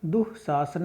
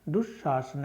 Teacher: तो यहाँ पर संधि होकर तो आपके दो दो शब्द बनेंगे, जैसे यहाँ पर बनाए गए हैं दुह शासन है या फिर दुशासन है। ठीक है, एक जगह तो आपका विसर्गों के रूप में ही रहेंगी ज्यों की त्यों, और दूसरी जगह पर विसर्गों का श बन जाएगा।